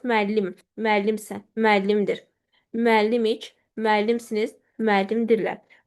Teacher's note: Vurğu qəbul etmirlər. Vurğunu ötürürlər özdən əvvələ.